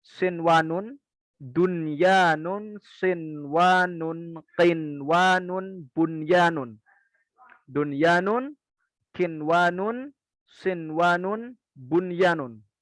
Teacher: Hanya ya atau wawu tanpa mim dan nun. Dalam satu kalimat maka tidak dengan gunnah, tidak dengan idgham, tapi dengan jelas. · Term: izhar mutlak